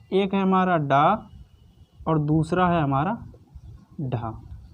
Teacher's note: उत्क्षिप्त व्यंजन उनको कहते हैं जिसमें जीभ झटके से नीचे आती है, यानी कि जीभ जो है झटके से नीचे आती है।